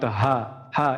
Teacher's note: এটা কোথাও হলকের কোথাও বাধাপ্রাপ্ত হবে না